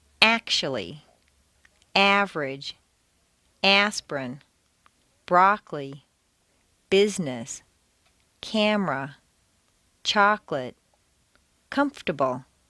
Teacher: some longer words that are stressed on the first syllable squeeze weak syllables right out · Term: squeezed out syllables